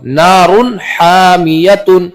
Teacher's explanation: تو یہاں پر تنوین کو ظاہر کر کے بغیر غنہ کی جلدی پڑھیں گے، اس کو اظہار کہتے ہیں۔